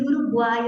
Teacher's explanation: Meiro, separamos o 2 S, então é hiato. E Uruguai, eu tenho 3 sons vocálicos na mesma sílaba, o que nos dá um tritongo